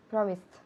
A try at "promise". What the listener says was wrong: No, al final, no hay nada al final. Promise. El último sonido es una S. Okay, so se escribe P-R-O-M-I-S-E. Okay, so promise. Promise. En infinitivo en presente, el último sonido es una S. Promise.